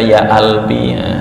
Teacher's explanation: Ja dibaca ga, ifrah ya qalbi dibaca ya albi. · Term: bahasa Mesir